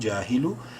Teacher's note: جیم الف زبر جا الف مدہ ہے جیم کو ایک الف برابر لمبا کریں گے